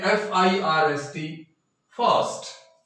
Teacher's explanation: जो आर है वो एक तरह से छुप जाता है, साइलेंट हो जाता है, उसकी आवाज है वो हल्के ए में चेंज हो जाती है · ये जब भी आर के तुरंत बाद कोई कॉन्सोनेंट आएगा तो कॉन्सोनेंट आने की वजह से और आर है वो चुप हो जाएगा, साइलेंट हो जाएगा और स्लाइट ए की आवाज देगा, तो हम इसको बोलेंगे फास्ट।